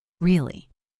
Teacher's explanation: If I say really with a high rising tone, it means surprise. Really. Like I cannot believe it.